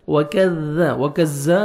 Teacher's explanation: باریک پڑھیں گے اور زال کو نرمی سے ادا کرنا ہے، وَكَذَّ زور سے نہیں پڑھیں گے، زال کو نرمی سے ادا کریں گے